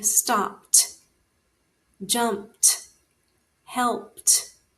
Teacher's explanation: because we have the unvoiced consonant, we're going to pronounce it as a T. So, this one would be stopped, jumped, helped.